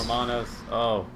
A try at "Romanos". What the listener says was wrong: Gotta put emphasis on the R. Romanos.